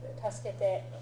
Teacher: the e and the u vowel sounds tend to get shortened almost to the point of disappearing. So it's not usually pronounced tasukete, it's tasukete.